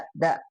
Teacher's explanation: Sedangkan huruf dal, nah dia posisinya ada di ujung lidah ya, da ketemu dengan gusi gigi seri atasnya, da tempat tumbuhnya, da di du, tapi enggak ke giginya ya, tempat tumbuhnya ya, da di du bade.